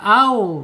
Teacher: huruf wau ini terbuka au bukan tertutup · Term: alinfitah